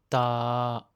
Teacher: Pour le non aspiré, quand on le prononce, il faut faire attention de ne pas souffler d'air du tout. Seul le son sort de votre bouche.